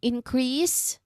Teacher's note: increase, we stress on the first syllable here. So this version is what? It's a noun. It means growth.